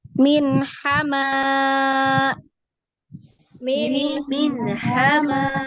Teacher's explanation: Hamzah ditutup ya, berarti ditutup pita suaranya karena ada hamzah sukun ya.